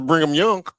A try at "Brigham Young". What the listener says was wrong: Brigham. no N in it. It's Brigham.